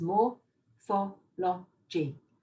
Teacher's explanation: Morphology is interesting because it's got 4 sounds, more-pho-lo-gy. And the mo and the lo are both louder, but the first one is the loudest of all. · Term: stress